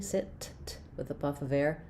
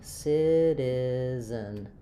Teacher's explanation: And then if I'm working on citizen, I have first syllable stress, letter C says the S sound, just like in the word sit, but unlike in the word sit, where I might have aspirated T, sit, with a puff of air, citizen, I'm going to have a flap T, which sounds a little bit more like a light D sound